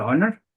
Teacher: So here is H silent. So the first sound is O. So it's a vowel sound, not consonant sound.